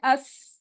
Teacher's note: अस ये सीन है ठीक अस अगर कह रहे हैं और सीटी की आवाज इतनी क्लियर निकल रही है फ्लैट आपकी जबान है बारीक पढे तो यह सीन अदा हो रहा है